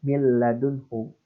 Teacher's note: Jadi mil ladunhu ini seolah-olah ada lam sukun gitu ya. Ada lam sukun dan ada lam yang berharakat. Makanya bisa dibilang ini ada seperti tasydid gitu ya. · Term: idgham bila gunnah